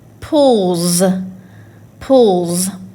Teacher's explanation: So we know suffix S is going to make that Z sound.